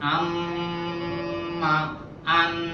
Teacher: নাকের বাঁশির মধ্যে গুনগুন করার নাম হচ্ছে গুন্না